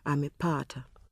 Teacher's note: the word amepata has 4 syllables, a, me, pa, ta, and the stress falls on pa. The penultimate one, amepata. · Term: stressed syllable